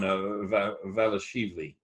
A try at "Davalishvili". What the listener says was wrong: Davalishvili, but As far as I know, it's Davalishvili, but.